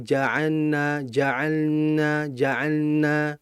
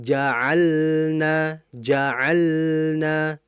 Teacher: Jangan sampai kita itu meleburkan suara lamnya dikarenakan ada nun. Sebabnya adalah lam sama nun ini makhrajnya dekat. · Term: lam mati